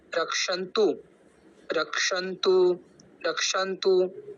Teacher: तो जो तू शब्द है उसको हम लंबा नहीं खींचेंगे, दीर्घ नहीं खींचेंगे, क्योंकि वो हर्ष है